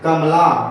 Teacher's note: कमला में क पे ज्यादा जोर पड़ रहा है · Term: बलाघात